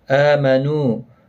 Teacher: حمزہ کے اوپر کھڑی زبر ہے، ایک الف کی مقدار کے برابر کھینچ کر پڑھیں گے